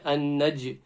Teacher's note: the jim is a qalqala, there's a qalqala bounce there, an-naj. And then we're on the next line, muthaqib, ba again qalqala, qaf, Is Qaf full mouth letter, guys?